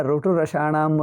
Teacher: ರುಟುರಶಾಣ ನಾಲಿಕೆ ಸ್ವಲ್ಪ ಹಿಂದಿಕೆ ಹೋಗಿ ಮೇಲಕೆ ಟಚ್ ಆಗುತ್ತದೆ ಸ್ವಲ್ಪ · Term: ಮೂರ್ಧ ಸ್ಥಾನದಿಂದ